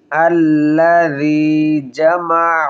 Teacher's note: জাল পাতলা হবে এবং নরম হবে